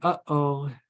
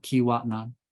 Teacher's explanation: So that little catch, stopping of air, is a glottal stop. · This little apostrophe represents a glottal stop. So when you make this sound, you cut off the airflow in your vocal tract. Similar to the sound, the famous example is when we say, when we spill the water or spill the milk, we say, uh-oh.